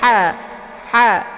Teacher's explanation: dibacanya tipis kemudian agak berdesis angin karena Ha ini adalah sifatnya Hamas jadi dia isinya letak di · letak di tenggorokan bagian tengah sejajar dengan huruf Ain Jadi dibacanya ha ha bukan hafidu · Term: ha kecil